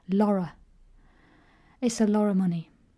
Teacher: Or even more unstressed in some dialects is lorra. Like Liverpool, they say lorra money.